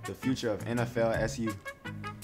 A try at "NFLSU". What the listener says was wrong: You had 2 L's, just 1 L. NFLSU. No, it's that L trips everybody up.